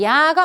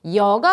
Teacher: 살짝 이 소리에 가까운 반모음 이를 활용하여서 이중모음 만들어지는 거예요